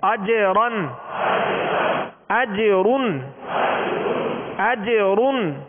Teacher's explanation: جیم پر قلقلہ اور را کو پر